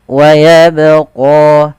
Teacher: Di sini ada huruf ba yang diwarnai dengan warna biru. Ini menandakan dia bacaan qalqalah yang di mana huruf ba ini harus kita pantulkan. Keserahan yang terjadi yang pertama tidak memantulkan huruf ba dalam membaca qalqalah.